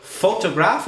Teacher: photograph it's on the first syllable